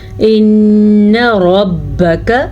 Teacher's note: یہ آپ کو شد نظر آ رہی ہے نا، یہ جو 3 اوپر کنارے ہیں ان کو شد کہتے ہیں۔ ان ربک، را کو پر پڑھنا ہے کیونکہ را پہ زبر ہے